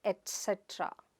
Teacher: It is not ek cetra or etcetera, but et cetra. Its /t/ sound there